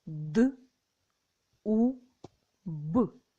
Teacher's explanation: перший звук д твердий приголосний позначається рисочкою